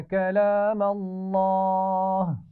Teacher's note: کلام اللہ لفظ اللہ کے لام کو موٹا پڑا جائے گا